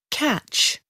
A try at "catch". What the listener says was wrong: Catch, good.